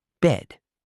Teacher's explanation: The short E in bed is more relaxed, with your mouth slightly open and your tongue in a more neutral position.